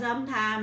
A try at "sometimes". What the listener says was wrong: It sounds like you're saying sometime.